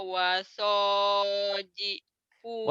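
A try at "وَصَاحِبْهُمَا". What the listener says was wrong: Wasahib. Bukan wasojib. Wasahib. Wasahibhuma.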